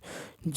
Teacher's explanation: ज जो है अल्पप्राण घोष है